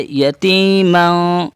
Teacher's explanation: فا ہے کیا ہے، حروف اخفا میں سے ہے. تو یتیمن کے بجائے ناک میں آواز کو چھپائیں گے، جیسے یتیماں، یتیمن نہیں کہیں گے، یتیماں.